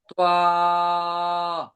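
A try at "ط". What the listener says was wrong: তোয়া বলা যাবে না, তো।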